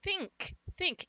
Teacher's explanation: And as I'm taking that I sound and making that nasal and shoving it up my nose, my tongue, in efficiency of shoving it, pulling it and shoving it, it's stretching the sound. And when the I sound is stretched, it becomes E